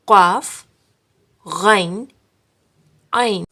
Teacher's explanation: Just recognize that they are deeper than normal K or G sounds.